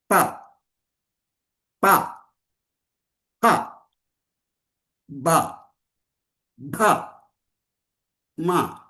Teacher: पवर्ग ओष्ठ से आता है, लिप से, पवर्ग क्लोज द लिप्स, ओष्ठ बंद कृत्वा उच्चारण करना है। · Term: ओष्ठ वर्णानि